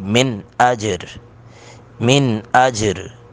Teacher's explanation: یہاں پہ من کو من ہی پڑھیں گے، ناک میں آواز نہیں جائے گی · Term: اظہار